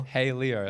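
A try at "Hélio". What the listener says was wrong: It's Helio. Like H doesn't even exist.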